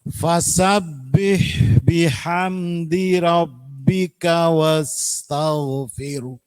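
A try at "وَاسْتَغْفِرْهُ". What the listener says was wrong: Fir tetap tipis, fir. Fir. Enggak, haknya enggak kelihatan. Firnya tetap meringis nggih. Fir, posisinya lisannya tetap meringis. Fir. Nah, firnya tetap meringis tapi ditambahi hembusan hak. Fir. Nah, jangan firah. Fir. Jadi haknya itu di mana? Posisinya hak di mana? Di dada. Fir. Nah, kalau hak seperti tadi fathah itu di tenggorokan. Kalau hak di dada. Fir.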